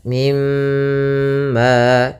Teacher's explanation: tahan dulu suara mimnya dua harakat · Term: ghunah, gunnah